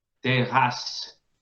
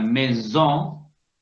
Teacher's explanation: Funciona como una S nuestra. O sea, se nombra como una S y no como un zumbido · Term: doble S